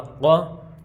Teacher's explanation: یہ قاف حروف مستعلیہ میں سے موٹا کر کے پڑھیں گے